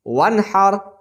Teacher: اظہار کریں گے، نون ساکن کے بعد ہا ہے